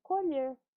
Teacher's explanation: colher é o verbo, então tem um som fechado do O